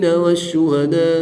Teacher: یہاں پر بھی مد متصل ہے، الف مدہ کے بعد حمزہ اسی کلمے میں ہے تو یہاں پر بھی مد متصل ہے، 3 سے 5 الف تک کھینچ کر پڑھیں گے۔